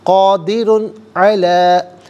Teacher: قادر، را پر دو پیش کی تنوین ہے، اسے پر کر کے پڑھا جائے گا. اور قادر میں تنوین کے بعد علا میں عین حرف حلقی آ رہا ہے تنوین کے بعد، تو یہاں ناظرین اظہار کے ساتھ پڑھیں گے، اخفا یا غنہ نہیں کریں گے. قادر علی، لام کھڑا زبر لا اور اوپر مد کی علامت ہے، مد منفصل ہے، مد جائز بھی کہتے ہیں.